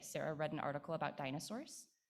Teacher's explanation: I hope you believe me that still the prominence is on dinosaurs, right? There is nothing that I'm doing specially at the left edge, the early edge of the focus, to make it correspond better with the WH question.